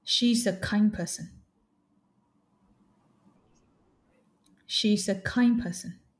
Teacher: the issue there is that you didn't pronounce the final D sound you pronounced the M like kind but you didn't say kind